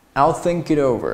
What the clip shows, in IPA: θɪŋk ɪt